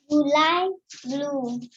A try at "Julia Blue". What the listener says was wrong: Julia Blue. Julia Blue. July is a month. So, Julia Blue.